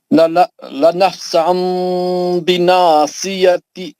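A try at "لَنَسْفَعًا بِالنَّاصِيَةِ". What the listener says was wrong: لنسفعن بالناسیہ. نون کا غنہ کریے. لنسفعن بالناسیہ. نون کا بھی غنہ کرو بول رہا ہوں.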